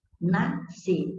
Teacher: a letra S existe na palavra nascer, mas não é pronunciada. Então, o S e o C aqui não formam encontro consonantal. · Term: dígrafo